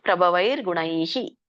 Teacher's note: ಮುಂದೆ ಅನುಸ್ವಾರ ಇದೆ, ವಿಸರ್ಗ ಇದೆಯಲ್ಲ, ಣೈಹಿ ಐ ಇದೆ, ಹಾಗಾಗಿ ಹಿ ಬರುತ್ತೆ. ಪ್ರಭವೈರ್ಗುಣೈಹಿ ಹಿ ಅನ್ನುವಂಥ ವಿಸರ್ಗ ಉಚ್ಚಾರಣೆ ಆಗುತ್ತೆ.